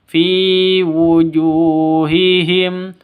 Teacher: ju panjang ya, ju panjang, ju ini panjang 2 ketukan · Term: mad asli